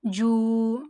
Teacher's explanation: It is Waw Mad and it is prolonged equal to 1 alif.